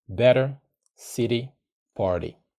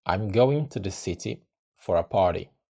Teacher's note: the T sound can either disappear or become a soft D in American English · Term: flop T